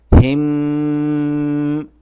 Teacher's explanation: اس جزم والے میم پر اخفا ہوگا